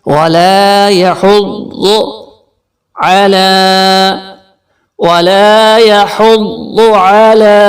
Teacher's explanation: اس کو red colour موٹے حرف کی نشانی ہے. علی، کھڑی زبر کی وجہ سے لام کو کھینچ کے پڑھیں گے عین حلق کے درمیان سے